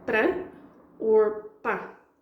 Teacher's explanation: 'para is a word we often say 'pra' or 'pa'